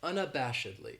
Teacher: this adverb has five syllables and the stress is on that third syllable that Bosch unabashedly that second syllable has that schwa that sound